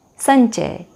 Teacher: म के बाद च वर्ग का वर्ण आने के कारण म का परिवर्तन च वर्ग के पंचम वर्ण के रूप में हो जाता है